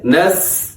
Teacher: سین کے اندر سیٹی ہوتی ہے، نس، اور باریک پڑھا جاتا ہے